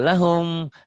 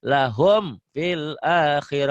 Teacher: Ini mim mati. Enggak ikhfa, enggak samar. Tapi jelas. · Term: idhar syafawi